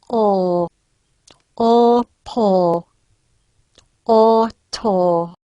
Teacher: Here's a back low rounded vowel for fun.